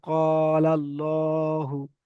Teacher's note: আল্লাহু শব্দের লাম মুশাদ্দা এর পূর্বে যাবার এসেছে তাই আল্লাহু শব্দের লাম কে পুর পড়তে হবে